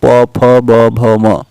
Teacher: यह जो है ओष्ठ व्यंजन होते हैं